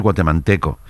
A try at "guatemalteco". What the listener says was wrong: Porque has dicho manteco. De manteca.